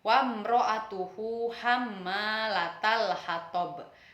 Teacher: Dibaca jelas tanpa dengung